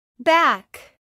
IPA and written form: bæk (back)